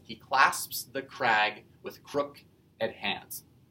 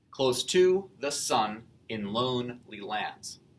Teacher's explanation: Iambic tetrameter because each line there has 4 feet of 2 syllables each, and they are iambs.